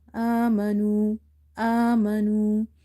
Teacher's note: So here we have stretched alif because of vertical fatha and nu waw as a dama.